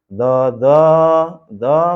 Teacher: Do enggak boleh diseret atau tidak boleh dipanjangkan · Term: satu ketukan